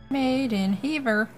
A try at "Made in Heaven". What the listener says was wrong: Heaver. Made in Heaven. Southern people putting ends where they shouldn't be. Heaven.